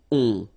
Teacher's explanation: it's a nasal and it goes in your nose and it goes like on. All right, so you don't hear any N, so it's really on.